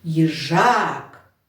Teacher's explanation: Наголос падає на другий склад.